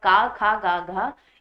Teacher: का वर्ग जो है वो आपका कंठ है, मतलब का खा गा घा ये सभी कंठ से बोले जाने वाली ध्वनियां